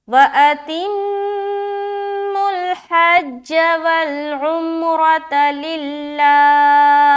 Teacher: लिल्लाह एंड में हा जाहिर होगी